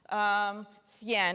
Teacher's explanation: This is pronounced with your tongue between your teeth, like you have a lisp. Thien in European Spanish.